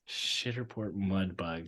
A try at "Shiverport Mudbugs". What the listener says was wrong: Shiver, not shitter. Shiverport.